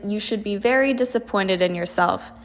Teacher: An example sentence for this one is, you should be very disappointed in yourself. Hear how it goes downhill because of the disappointment in your voice. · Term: falling pitch